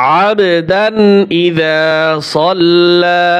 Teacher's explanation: ইয়ানহা, আরাআইতাল্লাযী ইয়ানহা আবদান ইযা সাল্লা, আবদান ইযা সাল্লা, আইন বা জবর আব, কলকলা হবে এখানে